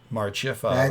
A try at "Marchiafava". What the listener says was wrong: There's Marchiafava. You put the accent on the I. That just sounds weird to me.